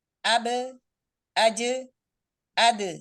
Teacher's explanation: Nah, untuk pantulannya bunyi qalqalah ya. Bunyi qalqalah ini tarkik tipis ya pada huruf ba, huruf jim dan huruf dal.